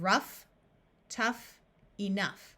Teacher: there are a few words where GH has the sound of F in these words the o u will have a short u sound